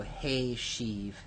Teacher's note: the hirek that we expect from the strong root here has been replaced with a tsere